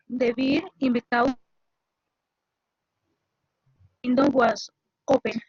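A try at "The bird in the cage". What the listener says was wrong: Muy bien, esa segunda palabra, la I, la pronuncias como una E, entonces dices the bird, porque the beer te suena como la cerveza, entonces estamos hablando de un pájaro, entonces por eso es importante que pronuncies como una E, una pequeña I, bird, bird, no beer.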